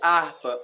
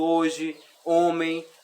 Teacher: percebe que sempre vai estar no começo da palavra, mas não tem som o H